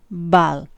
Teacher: stop like the one in bal and you can see that bal is very different because it has this long period of voicing in the closure so this actually means that voicing starts before the burst right · the release of a closure and the start of voicing well voicing starts before the release so voice onset time in this case is negative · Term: negative voice onset time, voiced unaspirated stop